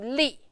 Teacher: fourth tone. Give a little bit more strength.